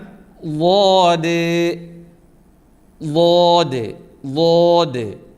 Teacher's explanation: അണപ്പല്ല് നമ്മൾ കോട്ടുപല്ല് അണപ്പല്ല് എന്നൊക്കെ പറയും അതിലേക്ക് തട്ടിച്ചാണ് ആ ഹർഫ് പറയേണ്ടത് മേലെ അണപ്പല്ലോടെ നാവിൻ സൈഡ് തട്ടിച്ചു വേണേ ഉച്ചരിക്കാൻ